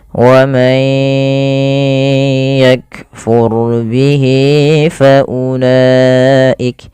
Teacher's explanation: وَمَنْ يَكْفُرْ بِهِ فَأُولَئِكَ. Kemudian ro-nya tebal karena di sini ro sukun didahului dengan fathah